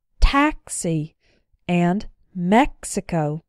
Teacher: these have the X being followed by a vowel sound however it's the first syllable that's the strong one not the syllable immediately after the X